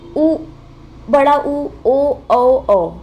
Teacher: जब आप इन वर्णों को उच्चारित करोगे तो आपके जो होठ हैं, ठीक है, वो राउंड शेप में हो जाएंगे, मतलब कि वो गोल हो जाएंगे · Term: व्रतमुखी